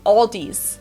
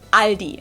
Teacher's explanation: they also sometimes add an s that isn't there in the end and say Aldi's in Germany we just say Aldi it has